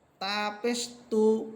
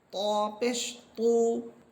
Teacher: তা চিকুন হরফ, ত মোটা হরফ। আমি তা এটা চিকুন করে বলতেছি এবং ত এটা মোটা করে বলতেছি।